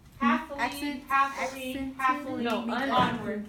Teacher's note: Now this is dactylic, and it is stressed, unstressed, unstressed.